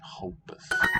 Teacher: note how word initial R sounds in Brazilian Portuguese, like kind of like an H